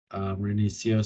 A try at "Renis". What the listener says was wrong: You keep saying Renicia, but it's just Renis.